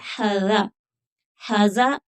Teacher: ذال بغیر سیٹی کے ہے تو اس کی سیٹی نہیں نکلے گی